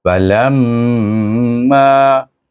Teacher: saya dengungkan di mim itu lam alif mim dengan wajibul gunah dua harakat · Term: wajib guna